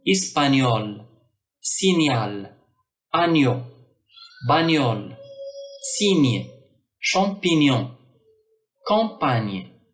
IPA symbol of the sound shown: ɲ